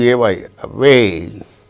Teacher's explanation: the initial letter a represents the sound very weak and short